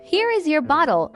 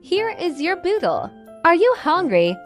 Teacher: Notice how the vowels are stretched out and the pitch goes up and down.